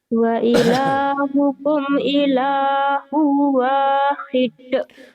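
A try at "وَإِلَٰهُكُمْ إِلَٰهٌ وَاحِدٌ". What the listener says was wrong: Wa ilahukum ilahu wahid. Kamu masih ditekan-tekan gitu ya. Wa ilahukum ilahu wahid. Itu yang rekaman kamu bisa lembut tuh.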